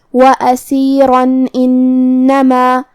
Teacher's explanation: ہم یہ آیت کو اگلی آیت کے ساتھ ملا کے پڑھے تو جو کہ حرف الالف کلمت انما دوسری والی آیت میں حروف الاظہار میں سے ہے، اور اظہار کا معنی ہے ظاہر کرنا، اور تنوین کی اصلیت نون ساکن ہے، تو ہمیں یہاں تنوین ظاہر کرنا ہے اور ہم اسے نون ساکن پڑھیں گے اور بغیر غنہ سے یہ حکم کو ادا کریں گے۔ وَأَسِيرًا إِنَّمَا، اور ہم کلمت اسیرہ پہ رکیں گے تو اس پہ مد الف سے رکیں گے۔